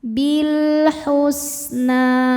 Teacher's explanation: Kemudian ada alif lam namanya alif lam qamariah. Sebab alif lam menghadapi huruf qamariah yaitu ha. Maka lam dibaca jelas. bil husna. Na hukumnya mad thobi'i muqaddar karena nun berharakat fathah panjang. · Na hukumnya mad thobi'i muqaddar karena nun berharakat fathah panjang. Cara bacanya panjang dua harakat.